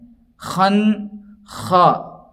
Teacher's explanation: خن خا، خا کی ادائیگی میں عام طور پر احتیاط کرنا چاہیے چونکہ خا جو ادا کیا جاتا ہے وہ حلق کے اوپر کے حصے سے ادا کیا جاتا ہے۔ نون کے اوپر تشدید ہے، تشدید والے حرف کو 2 بار پڑھیں گے، ایک تو پچھلے والے حرف سے ملائیں گے اور دوسرے خود اس کے اوپر جو حرکت ہوتی ہے، اور نون میں غنہ ہوگا یعنی ناک میں تھوڑی دیر آواز کو روکیں گے۔